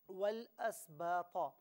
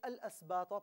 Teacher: واو کو لام کے ساتھ ملا کر پڑھا جائے، اور ملا کر ہی پڑھنا چاہیے، تو درمیان سے حمزہ حذف ہو جائے گا، حمزہ کو نہیں پڑھا جائے گا، اور اگر علیحدہ علیحدہ پڑھا جائے تو اسے الاسباط پڑھا جائے گا، یعنی حمزہ پر زبر موجود ہوگا۔